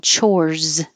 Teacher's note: it looks like an s but it sounds like a z